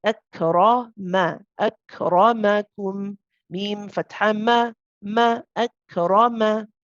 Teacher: You do not want to say akrama. Okay, you don't want to rhyme your meme with the ra because the meme is light and the ra is heavy.